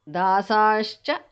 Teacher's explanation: त्रय्यम्बकं त्रिपुरसुन्दरि हर्म्यभूमिः अङ्गं विहारसरसी करुणाप्रवाहः। दासाः विसर्ग changes to sh there